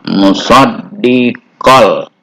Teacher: Bacaan yang dileburkan, yang dipadukan, tapi tidak dengan dengung. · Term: idgham bila gunnah